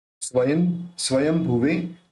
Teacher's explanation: के रूप में निकलता है तो यहां पे भ है तो भ बोलते समय दोनों मिलेंगे तो अपन इस बिंद का उच्चारण म के रूप में करेंगे